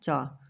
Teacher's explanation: च कहां से निकल रहा है? तालु से निकल रहा है।